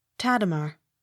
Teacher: Accent on first syllable.